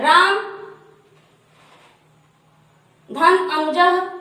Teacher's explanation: जैसे आइए हम लोग देखते हैं, जैसे अ धन अ यानी अ प्लस अ बराबर आ, अर्थात अ को ह्रस्व माना गया है और अ भी ह्रस्व है, दोनों मिलकर दीर्घ यानी बड़ा, ये भी छोटा है ये भी छोटा है और आ बड़ा है, तो जब छोटा और छोटा मिला है तो बड़ा हुआ है, यानी ह्रस्व और ह्रस्व मिला है तो दीर्घ हुआ है।